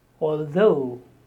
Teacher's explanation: The stress on the second syllable, although.